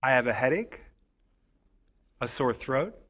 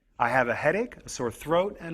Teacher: When we say a list of items, the voice often goes up on each item before the last one. The voice goes down on the last item in the list. Listen to the way my voice goes up on the first two items. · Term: Intonation of lists